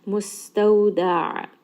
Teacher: ayn has tawassut, roll that around in the throat.